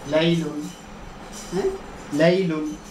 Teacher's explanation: 8 নম্বর মাখরাজ জিহ্বার আগার কিনারা, সামনের উপরে দাঁতের মাড়ির সঙ্গে লাগাইয়া লাম।